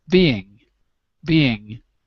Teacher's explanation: we don't normally say the g in being